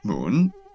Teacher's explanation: has a low initial pitch which falls even lower then rises to a high pitch